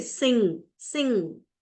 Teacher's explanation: blocks the passage then air flows through the nasal cavity so there is complete closure of mouth but the air flows through the nasal cavity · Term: nasal sound